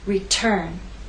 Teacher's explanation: Return has two syllables, but it's the second syllable that is stressed. T is at the start of that syllable, so we say return.